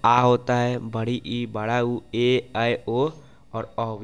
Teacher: जिन स्वरों को उच्चारण हम हस्व स्वर जितना समय करते हैं उससे दुगुना समय लगे तो उन्हें क्या कहते हैं, दीर्घ स्वर कहते हैं